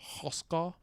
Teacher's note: One of the things that I love about this language is that it has some very prominent uvulars, which make any a vowel next to them just pull back to a. So we have Hoska.